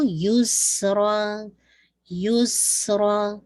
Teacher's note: یا کی ضمہ واضح کر کے ویسلنگ ساؤنڈ اور پھر 2 کاؤنٹ کے ساتھ یہ مد العوض بن جائے گی